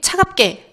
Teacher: 지금 비읍 뒤에 기역이 쌍기역으로 소리가 나는 것 볼 수 있었고요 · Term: 된소리되기